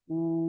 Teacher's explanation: হামজা উল্টা পেশ উ, বা উল্টা পেশ বু, তা উল্টা পেশ তু। উল্টা পেশটা হলো ওয়াও মাদ্দার সমতুল্য, একই একালি পরিমাণ টান দিয়ে পড়তে হবে